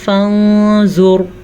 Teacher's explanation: ہم نون ساکن کو، یہ ہے نون ساکن، یا تنوین کو چھپا کے غنے کے ساتھ پڑھیں گے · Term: اخفا